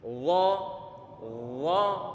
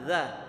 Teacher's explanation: pertengahan lidah sama pangkal lidah terangkat ke atas. Tebal dia. Dan beda dengan zal, dia turun ke bawah